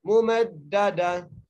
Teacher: इस ता को हम हा में तब्दील करेंगे और साकिन कर देंगे